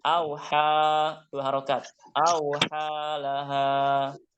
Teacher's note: Itu namanya alif kecil, artinya bacaan fathahnya itu dibaca panjang 2 harokat.